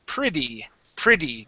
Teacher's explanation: the middle there is actually a short I sound okay and this Double T okay will actually make a D sound